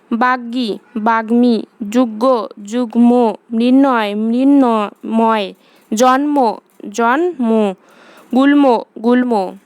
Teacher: গ ঞ ট ন মূর্ধন্য দন্তন্য বা ল বর্ণের সঙ্গে ম ফলা যুক্ত হলে ম এর উচ্চারণ বজায় থাকে